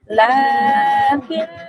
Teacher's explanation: উপর এখানে তাসদিদ রয়েছে তাই এটা নুন মুসাদ্দাদ বলা হয়। আর নুন মুসাদ্দাদকে এখানে ওয়াজিব গুন্না মানে এক আলিফ পরিমাণ গুন্না সহকারে পড়তে হবে